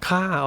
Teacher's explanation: Ka would kind of be like, the kap without the ra rua, so it's kind of a more casual version because they're using a longer vowel, so it's not too short and abrupt